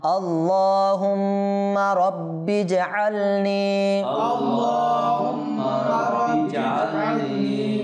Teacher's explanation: এরপর নি ইয়া মাদ্দা টানতে হবে